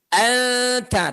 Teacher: Ta itu ujung lidahnya nempel ke gusi, maka nunnya mau ketuk pintu ke gusi. Anta, tapi belum masuk, berarti belum nempel gitu ya. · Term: ikhfa